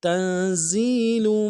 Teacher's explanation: تا کو نون کے ساتھ ملانا ہے، نون ساکن غنہ کریں گے